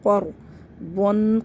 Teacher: را ساکن سے پہلے زبر ہے، اس کو موٹا پڑھیں گے ، قَرْضًا، قاف کو موٹا پڑھیں